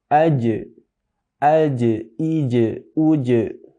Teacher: Wastul lisan ma'a wasatil hanakil a'la, atau tengah lidah nempel ke langit-langit atas bagian tengah juga. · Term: huruf jim